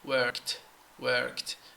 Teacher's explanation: syllable when I say there is no extra syllable it means there is no vowel sound between the K and the T